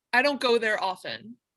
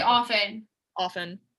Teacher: You just skip the T.